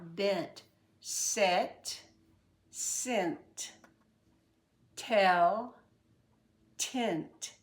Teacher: the N has tendency to change the e to a short I or almost a short I